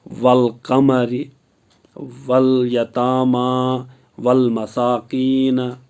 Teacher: حروف قمری کے 14 حروف میں سے پہلے الف اور لام آئے تو الف ہمیشہ خالی بلکہ لام پر حرکت ہوگی. اس لیے الف کو نہیں پڑھیں گے بلکہ لام کو پہلے والے حروف کے ساتھ ملا کر پڑھیں گے